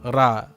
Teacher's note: a name in which you stress the rolling r on the first syllable